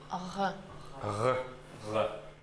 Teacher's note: Русский «г» взяли, сдвинули язык чуть назад и убрали смычку «г».